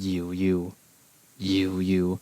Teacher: the specific tone is the cantonese fourth tone which is actually kind of difficult to pronounce it's kind of a low falling tone